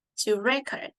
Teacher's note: it's a verb so we usually stress on the second syllable